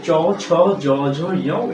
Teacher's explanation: জিহ্বাটা উল্টে তালুতে লেগে উচ্চারিত হচ্ছে, এই জন্য এই ধ্বনিগুলোকে বলা হয় তালব্য ধ্বনি।